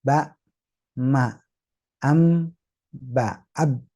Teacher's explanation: mim dan ba tinggal rapat bibirnya